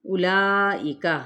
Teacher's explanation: حمزہ کی پیش کو لمبا نہیں کریں گے، لا کو 4 حرکت کھینچیں گے، کھڑا زبر بھی ہے، حمزہ کی زیر کو باریک ادا کیا جائے گا، کاف کی زبر کو لام کے ساتھ جب ملائیں گے لیکن لام کو پر نہیں کرنا۔